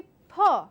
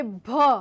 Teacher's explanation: it is completely obstructed because there's a heavy vibration that I sense